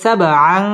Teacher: তানবিনের বামে শিন আসছে, শিন হচ্ছে ইকফার হরফ, গুন্না করে পড়তে হবে